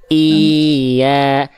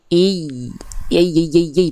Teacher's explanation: naber itu dia penekanan yang lebih kuat pada pelafalan i-nya. Jadi bukan hanya iya, tapi i.